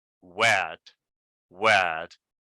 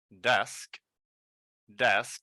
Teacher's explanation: My tongue is up, desk. And then when I say wet, I tense more my cheeks and my tongue is a little bit lower